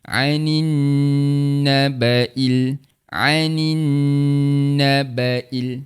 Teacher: Walaupun ada dalam penulisan, alif lam tak perlu dibunyikan. Maka yang perlu dibunyikan sebelumnya tu huruf yang berbaris iaitu huruf nun yang berbaris bawah >> terus masuk pada huruf yang bersabdu. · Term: alif lam syamsiah